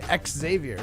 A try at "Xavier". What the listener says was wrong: okay, an X isn't even pronounced like X. An X is pronounced like Z, like a Z. xylophone.